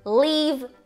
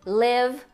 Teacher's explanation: Essa é a diferença entre esses dois Is. O primeiro mais longo, língua mais alta, o segundo mais curto, língua mais baixa.